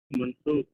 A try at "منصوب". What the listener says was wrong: منصوب. منصوب. منصوب. یہ غلط آ رہا، عین آ گیا، صوب. منصوب. منصوب. بولیے میرے ساتھ، منصوب. منصوب.